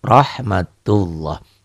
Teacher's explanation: Ro, karena ini tabkhim tebal, berbunyi O ya.